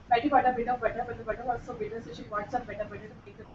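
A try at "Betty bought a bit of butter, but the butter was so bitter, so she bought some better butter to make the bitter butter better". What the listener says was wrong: Excellent, excellent. This was very well done.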